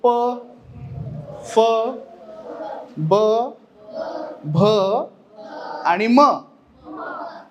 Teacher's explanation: ओठापासून उच्चार झाला म्हणून या व्यंजनांना ओष्य व्यंजन असं म्हणलं जातं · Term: ओष्ठय व्यंजन